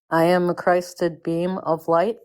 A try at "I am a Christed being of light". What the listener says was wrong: Not beam, a Christed being, like a being, like a yeah, like human being. Christed being.